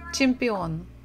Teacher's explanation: so we stress the final syllable